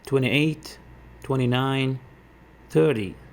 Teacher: the tens always stress the first syllable